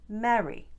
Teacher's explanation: This feminine first name has that sound we covered earlier in the video, the eh with the off glide, Mary. And then this word, the synonym for happy, gets the short pure vowel eh